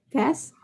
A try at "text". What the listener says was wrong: No, usted me está diciendo test. Text. Con X, porque hay una X acá, ¿cierto?